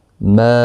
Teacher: مد منفصل ہے، چھوٹی مد 3 الف کی مقدار کے برابر کھینچ کر پڑھیں گے